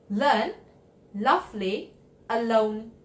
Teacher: touches the roof of your mouth just behind the top tip the air passes the side of your tongue and there should be voicing on your throat